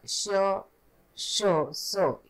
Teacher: श, श, स यांचा उच्चारही वायूच्या घर्षणाने होतो म्हणून महाप्राण वर्ण असे म्हणतात